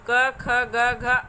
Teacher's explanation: इसमें वायु जो है कंठ को स्पर्श करके निकलती है, तो इन्हें कंठ व्यंजन कहते हैं।